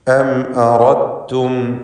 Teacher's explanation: അറദ്തും ഈ പദത്തിൽ ദാലും ശേഷം താവുമാണ്. സാക്കിനത്തായ ദാലിനെ തായിൽ പൂർണ്ണമായും ലയിപ്പിച്ച് ദാലിൻ്റെ ശബ്ദം അല്പം പോലും കേൾക്കാത്ത വിധത്തിൽ ശബ്ദമുള്ള താ മാത്രമാണ് ഉച്ചരിക്കുന്നത്. ഈ ലയിപ്പിക്കലിന് ഇദ്ഗാമുൽ മുതജാനിസൈനി സഗീർ എന്നാണ് പറയുക.